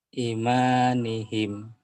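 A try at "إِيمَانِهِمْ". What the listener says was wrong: i-nya panjang ma-nya panjang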